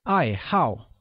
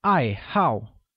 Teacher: pronounced with a falling tone on both